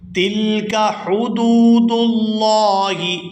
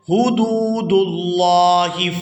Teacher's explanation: یہاں لفظ اللہ کے لام کو پورا ادا کیا جائے گا کیونکہ اس سے پہلے پیش ہے